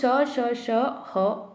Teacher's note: जिनको बोलने में मुख से सीटी की ध्वनि के रूप में आवाज़ निकलती है ऊष्म वर्ण कहलाते हैं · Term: ऊष्म व्यंजन